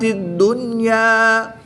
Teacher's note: اگر نون ساکن کے بعد یا حروف یرملون میں سے دوسرے کلمے میں ہوتا تب یہاں پر ادغام مع الغنہ ہوتا، مگر یہاں پر یا اسی کلمے میں ہے، اس بنا پر یہاں پر اظہار مطلق ہوگا، غنہ نہیں کریں گے بلکہ نون ساکن کو خوب ظاہر کر کے پڑھیں گے